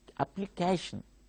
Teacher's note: the stress will be on the second syllable from the end